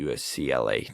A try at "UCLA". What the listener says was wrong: It almost sounded like you said USCLA.